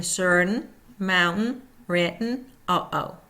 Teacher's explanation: Voiceless glottal stop, air escapes through mouth only.